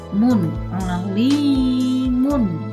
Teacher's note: tanwin ketemu dengan kho itu dibaca izhar, dibaca jelas.